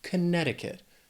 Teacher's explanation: This is another one where the spelling can throw off the pronunciation a little bit if you're trying to say it how it's spelled. But Connecticut has 4 syllables. The stress is on that second syllable.